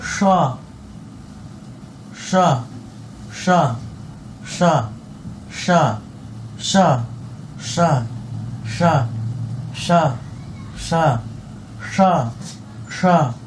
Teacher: जीभ को तालु में सटा के आप जोर से प्रेशर देके हवा को निकाले, ये स्व बन जाएगा। मूर्धा में जीभ को सटा के कस के हवा निकाले प्रेशर देके, तो आप मूर्धन स्व आपका बन जाएगा। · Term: तालव्य स्व